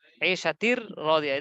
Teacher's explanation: দেখেন তানবিনের পর র, লাম, র এসেছে, তাসদিদ দিয়ে দিলাম, মিলিয়ে পড়লাম গুন্না ছাড়া। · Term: ইদগামে বেলা গুন্না